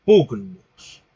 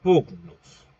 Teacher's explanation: un oclusivo velar sonoro que en la escritura se representa como bien sabemos con la grafía de la G